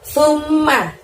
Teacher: Sum ditahan, ditekan selama 2 harokat baru bunyi ma dengan pendek ya.